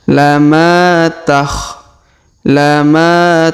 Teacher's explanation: huruf Ma kita panjangkan dua harakat karena terdapat Alif di depannya